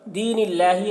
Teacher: अल्लाह कलाम को बारीक पढ़ेंगे, अल्लाह कलाम से पहले ज़ेर है